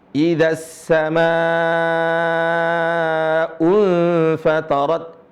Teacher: Sama dibaca panjang. Kemudian ada hamzah. Maka dibaca lebih dari 2 harokat. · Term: mad far'i